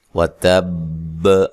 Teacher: حرف با مشدد ہے اور حروف قلقلہ میں سے بھی ہے، لہذا یہاں قلقلہ کو خوب واضح کرنا ہے